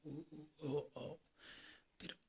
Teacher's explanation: वृताकार उच्चारण करने पर होठों का आकार गोल हो जाना